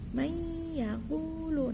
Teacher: Cara membacanya adalah dengan memasukkan beserta mendengung. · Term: idgham bi gunnah